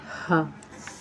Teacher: हा ये आखिरी हलक सीने की तरफ से अदा होता है